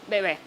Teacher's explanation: La primera B es oclusiva, que dijimos que partíamos de ese silencio.